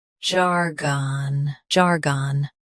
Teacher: Both US and UK have the same pronunciation of this word. Stress jar. Keep gone soft and quick. · Stress jar. Keep gon soft and quick.